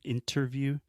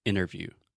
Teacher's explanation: If you really want to sound American, this probably doesn't work for British English, but in general, when we say interviews, I do not pronounce the T. So I'm not saying interview, I'm saying interview.